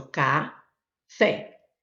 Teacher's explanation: eu tenho a sílaba forte, a última